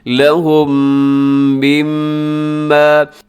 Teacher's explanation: لہم مما، یہاں پھر غنہ آ گیا، یعنی میم کے اوپر شد ہے تو آپ نے پھر یہاں پر غنہ کرنا ہے